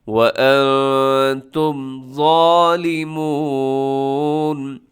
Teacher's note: وَأَنْتُمْ، اور تم جو لکھا ہوا ہے یعنی میم آخر میں آ رہا ہے، تو میم پر کیا کرنا ہے، آپ نے اظہار کرنا ہے، ظاہر کر کے پڑھنا ہے، مطلب تیزی سے پڑھ دینا، یہاں پر آپ نے رکنا نہیں ہے، یہاں پر آپ نے غنہ نہیں کرنا۔